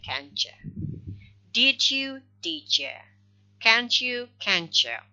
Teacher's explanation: t is voiceless, so it becomes the voiceless of alveopalatal ch. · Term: reciprocal assimilation